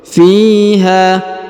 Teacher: Huruf fi dipanjangkan 2 harokat karena di depannya terdapat ya sukun. Fiha. Kemudian huruf ha dipanjangkan 5 harokat karena terdapat garis panjang 5 harokat ya.